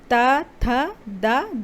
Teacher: जीभ के ऊपर दांत सट रहे हैं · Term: दंतव्य